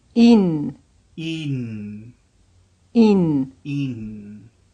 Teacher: making the final N extra long.